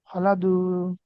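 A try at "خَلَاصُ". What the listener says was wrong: বু এটা দদের তো নুক্তা থাকে, এখানে তো নুক্তা নাই। কি এটা? দদের আগের হরফ কি? সদ না?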